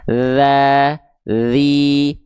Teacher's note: Dia enggak keluar nafas makanya bunyinya agak agak kasar dia karena suaranya doang yang ngalir.